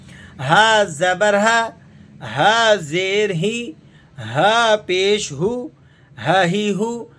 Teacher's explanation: ये हलक के उस हिस्से से अदा होता है जो सीने की तरफ मिला हुआ है, सीने के साथ मिला हुआ है, यानी इब्तिदाए हलक से ये अदा होता है।